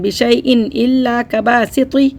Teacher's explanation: حمزہ آ رہا ہے حروف حلقی میں سے، تو یہاں پہ ہم نے غنہ نہیں کیا، اظہار کر کے پڑھیں گے